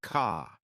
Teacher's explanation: British accent tends to soften the R. So car sounds more like ca.